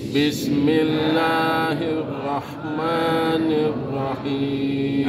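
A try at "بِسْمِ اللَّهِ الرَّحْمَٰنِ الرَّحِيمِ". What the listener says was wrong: Nah, jadi Bu, ini Pak, ada saya dengar sebelah kanan. Rahim, bukan ar-rahim. Ar-rahim, ha tipis. Ya, ar-rahmanirrahim. Jadi ar-rahmanirrahim huruf tipis semua, ha tipis.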